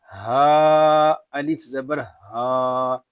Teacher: یہ ہا جو ہے یہ حلق کے نیچے والے حصے سے ادا ہوگا. ہا کو ہم ایک الف تک کھینچ کر پڑھیں گے کیونکہ یہاں پہ الف مدہ ہو رہا ہے.